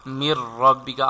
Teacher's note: after noon sakin there is ra. We have to read without ghunna, idgham without ghunna.